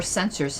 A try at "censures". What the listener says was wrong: Censures. U-R-E, not O-R, yes.